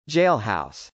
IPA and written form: dʒˈeɪlhˌɑʊs (jailhouse)